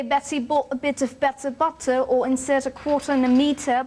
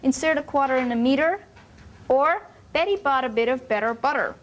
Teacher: the Americans flapped the T sound you know it sounds like an almost D sound and not keep it crisp and clear like the British so